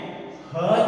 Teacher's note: ह जो है ये काकत्य ध्वनि है, इसको अलिजीवीय ध्वनि भी कहते हैं।